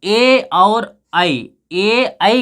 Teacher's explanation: ए और ऐ का उच्चारण स्थान कंठ और तालु है। यदि यहाँ पे देखिए इसमें दो हैं, ऐसे नहीं कि अकेले एक कंठ से उच्चारित होता है, एक स्थान से उच्चारित हो, ऐसा नहीं कि एक स्थान से, इसमें दोनों का जोड़ होता है।